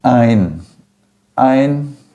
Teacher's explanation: o ditongo EI sempre vai ser pronunciado na forma de AI. Sempre vai ser AI.